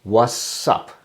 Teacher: What's up. Without the T sound.